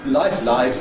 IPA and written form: laɪf (life)